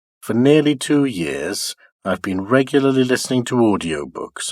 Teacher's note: following word two also keeps high in pitch in other words the pitch movement remains steady keeping high level from the stress syllable of regularly to the last syllable before the nucleus while for I've been they are de accented and pronounced low · the first two words on my are de accented and start low